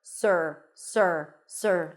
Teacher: you start with an S sound then it's the r as in stir so you transition directly from the s to the r sir sir sir like yes sir there isn't an o sound